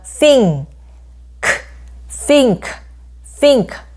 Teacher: 자는 혀끝을 깨무는 소리이고 무성음